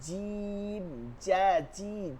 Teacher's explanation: একদম জিহ্বার মধ্যখান থেকে যেটা হবে সেটা জিম এটা সব সর্বোচ্চ শক্ত হবে